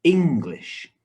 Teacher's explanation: two syllables and the stress is on the first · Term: word stress